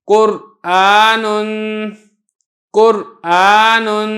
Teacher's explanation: راہ ساکن، اس کے اوپر ہلکا سا سکتہ کیا جاتا ہے حفص کی روایت میں